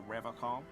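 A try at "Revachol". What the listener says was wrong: He pronounces Revacol with a hard K. Unlike other people.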